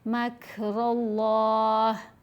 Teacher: रा को पुर पढ़ते हुए मोटा पढ़ते हुए लाम से मिलाएंगे, लाम को भी मोटा पढ़ेंगे · वैसे तो खड़ी हरकात को 2 हरकात की मिक़दार लंबा किया जाता है, लेकिन यहाँ पर खड़ा ज़बर के बाद साकिन हरफ पढ़ा जाएगा वक्फ़ की सूरत में, मद्दे आरिद लगाएंगे। लाम को 4 हरकात की मिक़दार लंबा करेंगे।